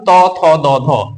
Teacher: দ ধ ধ্বনি বা বর্ণগুলো আছে এগুলোকে যখন আমরা উচ্চারণ করি জিভার আমাদের অগ্রভাগটা দাঁতের মধ্যে স্পর্শ করে উচ্চারিত হয় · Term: দন্ত ধ্বনি